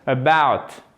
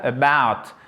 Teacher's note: Accentuation sur la deuxième syllabe, about.